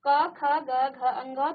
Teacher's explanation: क वर्ग क ख ग घ अंग। तो देखिए हमारे कंठ से ये आवाज आ रही है, इसलिए इनको कंठ कहा जाता है